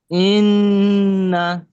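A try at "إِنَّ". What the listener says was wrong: এই যে পাঁচটা গুনছি, ছয়টা গুনতে পারলাম না কেন? ছয়টা তো গুনতে হবে, আপনি বলেন, আটটু গুণা করেন, বলেন, আবার বলেন।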